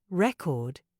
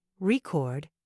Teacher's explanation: change the meaning of the word entirely take record for example if you stress the first syllable record it's a noun meaning a disc for playing music but if you stress the second syllable record it's a verb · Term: word stress